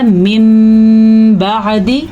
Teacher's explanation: तो ये नून साकिन मीम बदल जाएगा, तो ये बन गया मिन बादी।